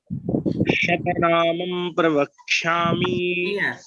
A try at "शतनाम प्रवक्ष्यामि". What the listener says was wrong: नहीं है, शतनाम, नामम नहीं है, नामम नहीं है, शतनाम।